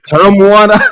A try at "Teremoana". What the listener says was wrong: You're saying it pretty good, but in in the islands, we roll that out. So, it's ter.